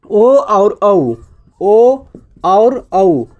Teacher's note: ठीक है, तो कंठ, कंठ और ओष्ठ से उच्चारण किसका हो जाएगा, ओ और औ का हो जाएगा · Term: कंठ ओष्ठ